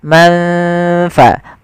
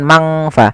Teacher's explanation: Tidak semua bacaan ikhfa dibaca dengan ang, tapi dia disesuaikan dengan hurufnya dan sifatnya. Maka di sini nunnya samarkan ke huruf fa.